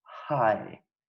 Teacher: there's only one glottal sound which is the sound as in hi